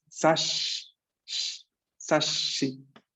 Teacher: Duplicamos el sonido sh de la S.